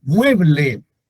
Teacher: mueble tiene acento en mué que es la sílaba tónica pero no se tilda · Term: acento prosódico